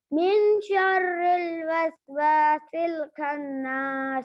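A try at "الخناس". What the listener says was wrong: खन्नी खन, खा मोटा होता है, खन्नास। खन, खन्नास। खा को मोटा कीजिए, गोल कीजिए मुंह को, खन, खन्नास।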